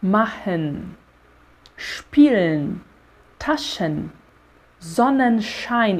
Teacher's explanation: com o final a gente ainda vai deixar esse N mordidinho e ainda vai tirar o E.